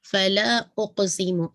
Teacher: حمزۃ القطع جو کہ ابتدائی کلام وسط کلام دونوں میں پڑھا جائے گا، یہ حذف نہیں ہوتا، دونوں صورتوں میں اس کو پڑھا جائے گا۔